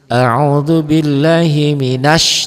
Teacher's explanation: Tuh kosong, tidak ada apa-apa. Alif lamnya tidak dibaca. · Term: alif lam syamsiah